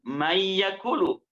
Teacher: Baca man yakulu karena hukumnya adalah idgham, maka dimasukkan mayyakulu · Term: idgham bi gunnah